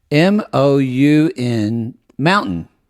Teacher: The last syllable is like a schwa.